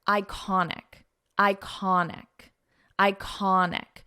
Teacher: So we pronounce this as an I sound iconic and the syllable stress is in the middle